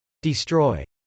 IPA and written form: dɪstrˈɔɪ (destroy)